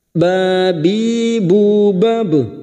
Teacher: ba sukun yang mati asli di tengah kalimat qalqalah sughra. Jangan lupa dipantulkan.